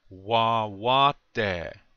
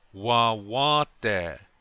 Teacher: Remember to put the accent on the second syllable, the second wa